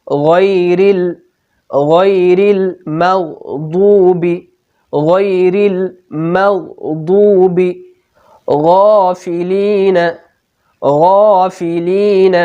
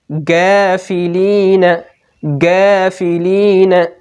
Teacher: غین میں بھی تفخیم پائی جاتی ہے، غین کو بھی ہمیشہ پر پڑھا جاتا ہے.